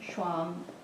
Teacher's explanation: it's not truly a geminate in German